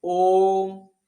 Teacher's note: जो प्लुत स्वर है उसमें बहुत ही अधिक समय लगता है, सबसे अधिक समय लगता है